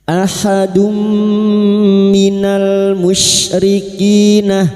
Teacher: memasukkan dengan mendengung masuk pada huruf mim dan mendengung selama tiga harakat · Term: idgam bigunah